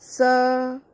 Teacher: जब वर्ण सा का उच्चारण करते हैं तो जीभ दांतों का स्पर्श करती है, इसीलिए इसे दंत स कहा जाता है।